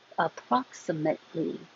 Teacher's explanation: Hold the T. Don't release that because there's an L right after it.